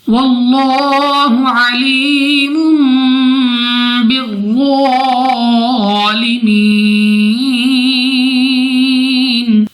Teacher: 2 پیش کے بعد ہمارے پاس با اقلاب کا قاعدہ غنہ کر کے پڑھا جائے گا